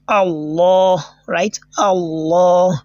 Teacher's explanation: So in this place, the lam ta'arif has been assimilated. That is, the first lam that you are seeing there has been assimilated into the second one, because the letter that is coming behind it happens to be a letter of a lam shams, right? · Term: idgham lam shamsiyya